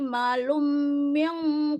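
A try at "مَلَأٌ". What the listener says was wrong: Malaum. panjang dulu baru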